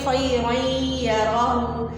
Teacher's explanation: اس میں جو نون کی آواز ہے ہم نے اس کو یا میں مکس کر دیا ہے